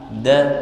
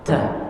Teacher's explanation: Kalau dal tidak keluar angin.